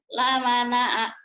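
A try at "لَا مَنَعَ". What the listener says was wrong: bukan, orang Jawa kan la manue. Manue La mana'a, Bu. La-nya panjang. La mana'a. La-nya panjang, Ibu. La mana'a.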